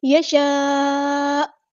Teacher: connected مد، مد متصل جڑی ہوئی مد ہے، جسے ہم نے 4 یا 5 کاؤنٹ لمبا کرنا ہے ، اور ہم یہاں وقف کرتے ہوئے حمزہ کو ساکن کر · دیں گے، تو آپ نے اس طرح نہیں پڑھنا، من یشاء، حمزہ کو بالکل سکپ نہیں کرنا، ختم نہیں کرتے، ساکن کریں گے ، یشاء اس طرح، جھٹکا حمزہ کا آئے گا، تو اس